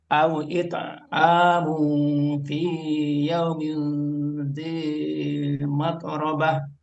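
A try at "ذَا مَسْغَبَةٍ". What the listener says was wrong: Bukan mat tapi mas sin mas gobah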